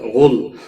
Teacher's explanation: غائن حروف مستعلیہ میں سے ہے، موٹا پڑھیں گے